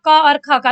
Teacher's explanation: कंठ मीन्स होता है गले से, जब आवाज हमारे गले से आती है तो वो कंठ्य ध्वनि कहलाती है। तो यहाँ पर क और ख आपके कंठ्य ध्वनि है